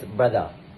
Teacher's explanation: Sudanese English speakers often emphasize the R sound, rolling it more into standard language. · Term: R sound emphasized